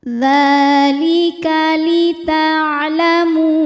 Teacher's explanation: Dzalika, hukum tajwidnya adalah mad tabi'i muqaddar, sebab ada huruf dzal yang harokatnya fathah panjang. Maka cara bacanya adalah dzal ini kita panjangkan 2 harokat saja.